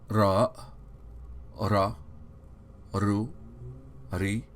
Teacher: it is produced by the tip of the tongue touching the upper hard palate